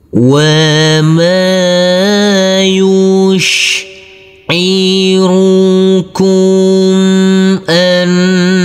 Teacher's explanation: Huruf nun kita tekan, kita tahan, serta kita dengungkan karena ini adalah bacaan hunna. Huruf ha kita baca dengan panjang 2 harokat karena kita wakafkan dulu.